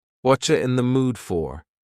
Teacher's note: Here, the word you has been reduced to cha.